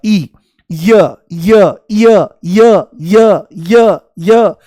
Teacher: जैसे ही य बोलोगे तो इ शुरू में महसूस होगा। · जैसे ही य बोलोगे तो ई शुरू में महसूस होगा, ई, य य य य य य य, जैसे सीढ़ी अटक गई हो तो ई की ध्वनि आती है। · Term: अर्ध स्वर